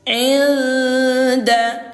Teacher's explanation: Yang disamarkan suara nun sukun ini kita samarkan ke huruf dal disertai dengung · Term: ikhfa